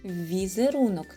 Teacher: починається на звук вь це приголосний м'який звук